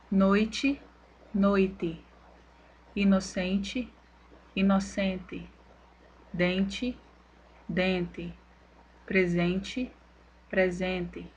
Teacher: Com o fonema T diante de E reduzido, ocorre também a permanência do fenômeno de despalatalização, uma vez que o fonema E é pronunciado com som de I em contextos fonológicos finais de palavras em posição átona